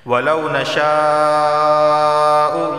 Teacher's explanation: وَلَوْ نَشَاءُ، یہ مد متصل ہے، ایک ہی لفظ کے اندر مدہ اور حمزہ دونوں جمع ہو گئے ہیں، اسے 4 الف کے برابر کھینچ کر پڑھا جائے گا